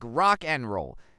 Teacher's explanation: the d in and is almost always dropped